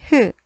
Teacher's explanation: 목청 사이에서 나는 목청 소리